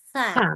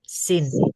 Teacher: bedakan antara sa keluar lidah dengan ya Sin gigi seri ditutup